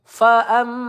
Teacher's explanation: mim bertasdid kita tahan ya gunah musyaddadah kita tahan dua atau tiga harakat